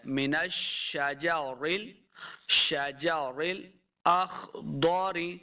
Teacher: خا اور ضاد دونوں کو موٹے پڑھیں گے، یہ حروف مستعلیہ سے ہیں · شین پہ سیٹی کی آواز آئے گی، نون کو شین کے ساتھ لانا ہے، شین مشدد ہے.